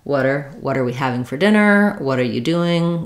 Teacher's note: It sounds almost like a single word, water, because I'm flapping that T as I link it.